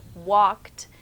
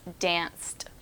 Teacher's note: This sound sounds like a T, even though it's the ed ending.